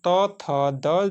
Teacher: दोस्तों दंत ध्वनि है, दंत से बोला जाता है दोस्तों